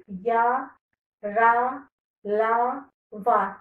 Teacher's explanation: अंतस्थ व्यंजन. मुख का कोई हिस्सा इस व्यंजन के उच्चारण में स्पर्श नहीं होता